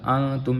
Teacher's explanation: یہاں پہ نون ساکن کا اخفا ہے، غنہ کریں گے